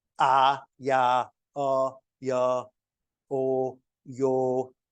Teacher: the addition of a Y sound is a palatal sound.